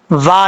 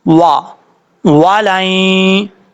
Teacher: واو کو پڑھتے وقت ہونٹ گول کر کے پڑھیں گے